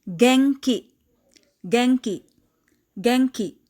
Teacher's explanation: N takes the sound of NG or ng before letters K and G.